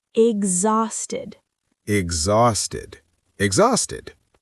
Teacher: The X sounds like GZ.